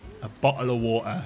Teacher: you can ignore the T in the middle of words and it will make you sound a lot more British